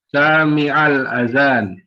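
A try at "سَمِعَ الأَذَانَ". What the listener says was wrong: Nah, pendek sa-nya.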